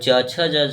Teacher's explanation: यह तालु से बोला जाता है। इसीलिए तालव्य व्यंजन कहा जाता है।